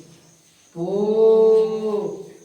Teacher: तो पहले पो बोलने से पहले क्या करते हैं, होठ को बंद करते हैं, पो का हो, तो होठ बंद करके खोले जाते हैं ना, तो इसमें बुआ इसी का उच्चारण स्थान क्या हो जाएगा, होठ।